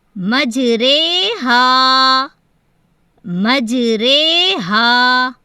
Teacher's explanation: مجرے کی ہا ہے، مجرے ہا، مجرے ہا، یہ امالہ کی را ہے اور یہ کھڑی زیر ہے، امالہ کی را بھی باریک پڑھی جائے گی